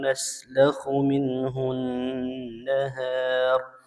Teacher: minhu nun sukun bertemu huruf ha, hukumnya izhar